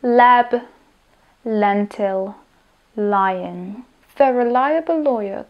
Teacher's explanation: sa ničoho nedotýka remake o má podobný otvor ako fonéma avšak špička jazyka sa dotýka alveolárneho hrebeňa a vzduch prúdi bokmi